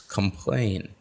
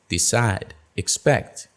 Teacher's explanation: the two syllable verbs with a Latin prefix complain decide expect where's the stress it is on the last syllable